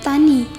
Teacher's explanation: alofon I tinggi atas depan tak bundar